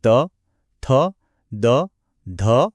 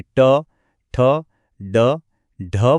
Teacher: દાંતના ઉપયોગથી બોલાતા દંતવ્ય વર્ણો જેવા કે ત થ દ ધ અને જીભને સહેજ વાળીને તાળવે અડાળીને બોલાતા મૂર્ધન્ય વર્ણો જેવા કે ટ ઠ ડ ઢ વચ્ચેનો તફાવત વર્ગખંડમાં આ ભેદ બરાબર શીખવવો જ પડે નહીંતર અર્થનો